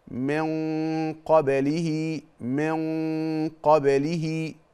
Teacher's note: والغنه هنا مفخمه ليه لان بعد الغنه حرف مفخم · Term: اخفاء حقيقي